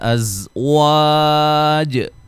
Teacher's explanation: زا کو سیٹی سے ادا کریں گے ، مد اصلی ہے، نون تنوین کا ادغام مع الغنہ ہے،